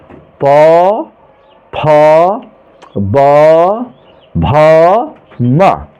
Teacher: दोनों ओठों के स्पर्श से बोले जाने वाले वर्ण हमारे ओष्ठ शब्द का प्रयोग किया जाता है।